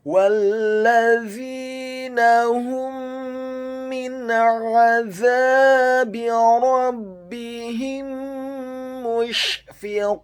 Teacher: huruf za-nya dibaca tipis, tarqiq, lidahnya agak keluar sedikit, kasrah dua harokat karena setelahnya ada huruf ya sukun, dan huruf nunnya dibaca tipis, fathah satu harokat. · huruf wawunya dibaca fathah, cukup satu harokat saja karena setelahnya langsung disambung huruf lam yang tasydid dan fathah satu harokat.